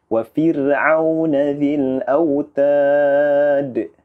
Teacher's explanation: huruf ra di sini kita harus membaca dengan bacaan yang tipis